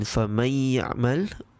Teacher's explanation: When Nun Sakinah meets Ya in فَمَنْ يَعْمَلْ, we notice that the Nun Sakinah sound is not read. Instead, it is being merged with the next huruf that it meets, Ya, and there is a prolonged nasal sound. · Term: Idgham bi Ghunnah